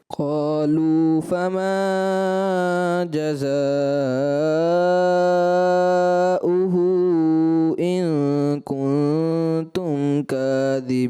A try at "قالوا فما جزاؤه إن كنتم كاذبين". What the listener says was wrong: وہی حروف مدہ کو بہت زیادہ دراز کر دیا تو یہ بار بار بیٹا غلطی بتائی جا رہی ہے.